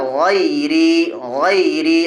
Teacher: غیری، غیری، غی میں یائلین، یا ساکن سے پہلے غین کے بعد زبر ہے، اس لیے یائلین ہوگی، یائلین کو نرم آواز کے ساتھ جلدی پڑھیں گے